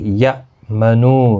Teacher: حمزہ ساکن کو جھٹکی کے ساتھ پڑھیں گے۔ یا منو نو واو مدہ ہے، ایک الف کی مقدار کے برابر کھینچیں گے۔